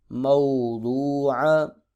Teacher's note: وو پر مدہ ہو رہا ہے، ایک الف کے برابر لمبا کریں گے کیونکہ واو ساکن سے پہلے پیش آ گئی ہے۔ عین حروف حلقی میں سے ہے، حلق سے ادا کریں گے